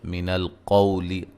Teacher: قاف کو موٹا ادا کریں گے، واو لین ہے۔